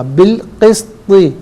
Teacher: قاف موٹا، سین باریک، طا موٹا